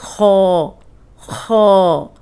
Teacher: اب اس میں آپ نے یہ کہ ہونٹ گول نہ ہو, خو اس طرح نہیں, خو آپ نے ہونٹ گول نہیں کرنے, اس کو موٹا پڑھنا ہے